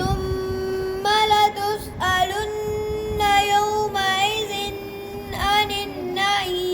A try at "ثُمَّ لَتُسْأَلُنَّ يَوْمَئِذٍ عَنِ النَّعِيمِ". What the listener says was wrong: یومئذن پہ غنّہ نہیں عانن پہ ہے جی